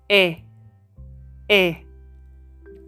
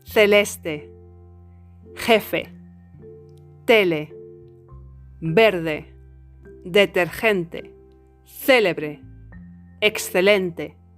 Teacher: La vocal E en español se pronuncia E, como en Pepe, Pepe, y no como en inglés en, por ejemplo, pen. The lips are spread as in a smile. The tongue is at the front of the mouth.